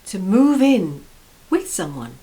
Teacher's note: notice how this stress is on the preposition in